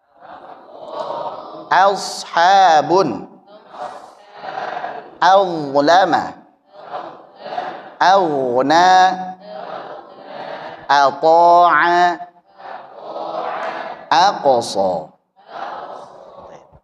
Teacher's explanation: jadi kalau ada hamzah a ketemu dengan huruf tebal asofa, adlama aqs dan lain sebagainya maka hamzahnya tetap tipis